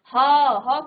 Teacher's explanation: ह के लिए आप कहीं भी टच नहीं कर रहे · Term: स्वर यंत्री